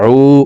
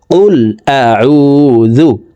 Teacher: আইন ওয়াও পেশ উ, হালকের মধ্যখান থেকে উচ্চারণ করতে হবে